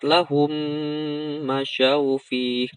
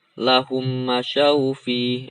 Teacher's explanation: di mimnya ini ditahan 2 harokat